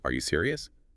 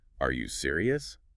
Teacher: If you say, are you serious? Flat. It barely sounds like a question. But add that little upward flick at the end, are you serious?